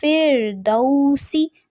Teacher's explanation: فردوسی دال پہ زبر ہے اور سین کی زیر کو لمبا نہیں کرنا